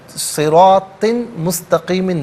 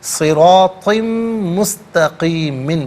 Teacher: صراطن میں طا کے نیچے 2 زیر کی تنوین ہے، اسے مستقیمن کے میم کے ساتھ ملائیں گے اور میم کی آواز غنّے کے ساتھ ادا کی جائے گی، تنوین کی آواز نہیں ہوگی